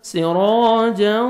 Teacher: ہے، سراجا تنوین کے بعد حروف یرملون میں سے واو ہے، ادغام کریں گے غنہ کے ساتھ، سراجا نوز میں ساؤنڈ لے کے جائیں گے